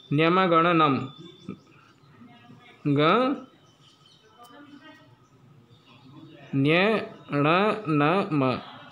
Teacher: नासिका और गला कंठ दोनों से संयुक्त रूप से बोले जाते हैं, नासिक्य वर्ण कहते हैं इन्हें